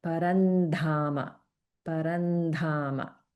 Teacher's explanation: we have anuswara followed by dha, which is a dental sound. So we get parandhama, parandhama.